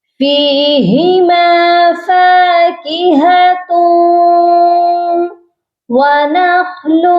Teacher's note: یہاں پر آپ دیکھیے دو پیش ہیں تو تاؤ نہیں پڑھا جائے گا، یہ پڑھا جائے گا فاکہۃ۔ تا کو ہم واو مشدد کے ساتھ ملائیں گے اور غنہ بھی کریں گے